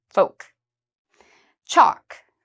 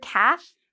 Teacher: for this word calf you do not need to pronounce the L it is silent